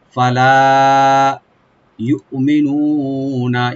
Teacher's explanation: ইউমিনুনা হামজাকে right দিবেন, কলকালা হবে না। মি বলবো, নুন একালে টানবেন, লাস্টের নুনে কোনো টান নাই।